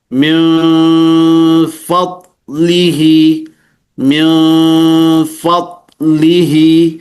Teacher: kalau dia huruf fa mengarah ke mim, seolah-olah mim, tapi tidak betul-betul mim. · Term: ikhfa